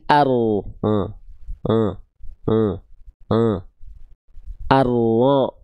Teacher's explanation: Jadi dia dilafalkan dari bagian punggung lidah bukan ujungnya ya